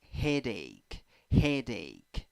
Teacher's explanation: two syllables the first syllable is the stressed syllable